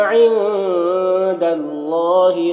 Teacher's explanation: نون کی آواز کو ناک میں چھپا کر ایک الف کی مقدار کھینچ کر پڑھیں گے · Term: اخفا